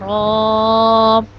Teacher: جب ہماری زبان کا گول حصہ اس کی پشت کے ساتھ اگلے والے 4 دانتوں کے مسوڑوں سے لگے گا تو را ادا ہوگا، اور را کو ہم ایک الف کے برابر لمبا کرتے ہیں، را۔